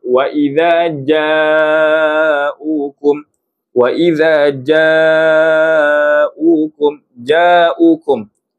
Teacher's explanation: Huruf jim tempat keluar di mana? Tengah lidah dirapatkan ke langit.